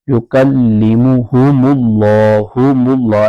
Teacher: لام عز و جل کا پر کر کے پڑھیں گے